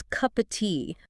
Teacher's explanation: The P links to the O in of, which is, by the way, reduced to a schwa.